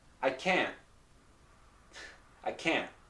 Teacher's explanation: What's happening is that the T, when I pronounce it this way, the T is not released. So I say can't, and then my T comes up, my tongue comes up to pronounce the T sound, but does not release. Here, it really can't.